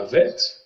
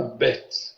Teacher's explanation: Il aura seulement le rôle de rendre la consonne occlusive, c'est-à-dire cette même consonne sans le Dagesh se prononcera vet, vous le savez, avec la consonne elle se prononcera bet, sans dédoublement de la consonne